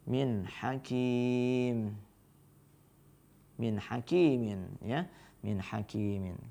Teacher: Jadi ketika nun sukun bertemu dengan ha, ya, n-nya atau nun sukunnya harus dibaca jelas gitu ya.